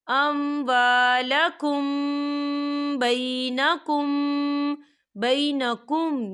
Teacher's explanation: تو یہاں پر اخفا شفوی ہو رہا ہے، تو ہم اسے غنّے کے ساتھ پڑھیں گے۔